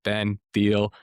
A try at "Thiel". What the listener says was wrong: My name is Ben, and my last name is Thiel. Actually, the H is silent. Thiel, it's okay.